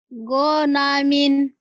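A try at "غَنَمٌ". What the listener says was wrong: Ini tidak boleh panjang. Gonamin.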